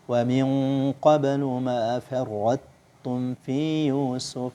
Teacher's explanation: Ta sama ta, makhrajnya sama tapi sifatnya berbeda. Tapi cara membacanya huruf ta sukun tapi sifat tebalnya masih terasa sebelum masuk ke huruf tu tasydid